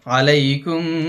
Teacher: এখানে মিম উচ্চারণের সময় নরম ভাবে গোপন রাখা হয়